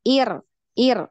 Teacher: jangan dipanjangkan hamzahnya tetap satu ketukan